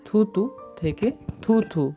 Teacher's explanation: অল্প প্রাণ ধ্বনি যখন মহাপ্রাণ ধ্বনির মতো উচ্চারিত হয় তখন আমরা তাকে বলবো পিনায়ন।